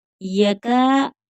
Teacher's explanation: यका काफ बारीक पढ़ा जाएगा, थोड़ा खींच कर पढ़ेंगे क्योंकि अलिफ मद्दा है।